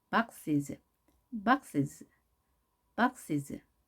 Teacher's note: 자, is 발음을 약하게 해서 내려주시고요.